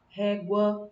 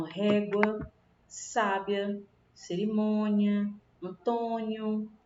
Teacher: O A tem um som mais forte do que o U, certo? O U ele é pronunciado mais rápido. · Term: ditongo crescente